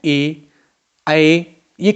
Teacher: ए ऐ कंठ तालु होते हैं